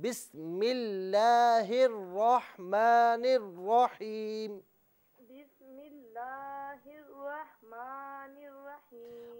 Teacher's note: लफ्ज़ अल्लाह की जो लाम है इसे बारीक पढ़ें